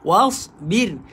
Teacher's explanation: Wasbir. Bir nipis, huruf ra sukun sebelumnya berbaris, kasrah baca dengan nipis